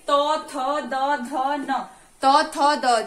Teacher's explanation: त वर्ग क्या है, दंत्य, यानी कि त थ द ध न, त थ द, जब भी हम त थ द बोलते हैं तो हमारी जीभ कहाँ लगती है, दांतों से टच होती है, इसीलिए इसको किस में रखा गया है, दंत्य में।